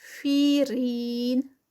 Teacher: 4 counts کا stretch اس کا، کیونکہ یا جو ہے مدہ سٹاپ پر ہے